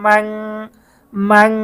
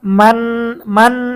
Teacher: অনেকে ইকফার গুন্না করার সময় এইভাবে করে যে মান মান বাংলাতে নয়ের উচ্চারণ করে, মূলত ইকফার গুন্না করার সময় অনস্কারের উচ্চারণ হবে